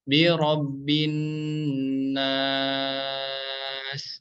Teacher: maka cara bacanya bisa dipanjangkan 2, 4 atau 6 harokat. Ini adalah hukum bacaan mad arid lisukun · ketika wakof membaca ayat yang pertama, kita membacanya bisa 2, bisa 4 atau bisa 6 harokat